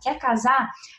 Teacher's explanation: Ele não botou o R dos infinitivos